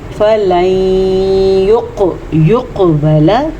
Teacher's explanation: کلکلے کے ساتھ قاف کو موٹا بھی پڑھنا ہے اور قاف پہ کلکلہ بھی کرنا ہے